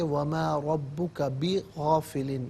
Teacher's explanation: را پر زبر ہے، را کو پر کر کے پڑھیں گے